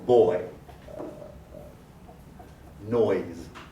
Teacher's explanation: Oi starts at the back in the mid, and then also goes to the front. But since it completely changes from back to front, it's also a true diphthong, oi. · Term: diphthongs